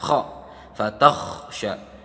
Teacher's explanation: Nah, kha ini kita perlu ingatkan teman-teman bahwa kha itu makhrajnya di dalam tenggorokan, seperti ketika hendak berdahak